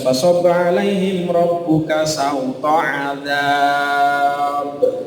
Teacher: Ba-nya itu ada pantulannya. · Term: qalqalah